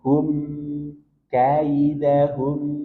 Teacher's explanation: mim di sini punya sifat bainiah. Maka nanti sedikit alirkan.